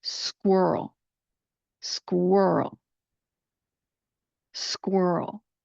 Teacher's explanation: We're going to do a little bit for that Q and the U and then transition to the Earl sound again with the dark L ending